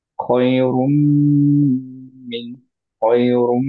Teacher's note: রুম ধরে রাখলাম because হচ্ছে মিমটায় গুণনা আছে। অবভিয়াসলি এইটার উপরে যেহেতু সাদ্দা, আমরা বুঝতে পারছি মিমটা একটা সুকুনে মিম আছে, একটা হচ্ছে আমাদের আহ কাজটা সহ আছে, জের সহ আছে, রাইট।